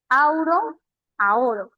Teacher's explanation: las dos vocales se convirtieron en una sola vocal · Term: monoptongación